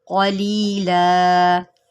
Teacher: قاف ہے، حروف مستعلیہ میں سے ہے، اس کو موٹا کر کے پڑھیں